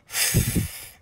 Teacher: And then you push air through your teeth. You don't use your voice. Put your hand in front of your mouth and see if you can feel the air that comes out of your mouth as you say. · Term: the sound F